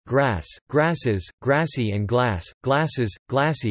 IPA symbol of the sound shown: s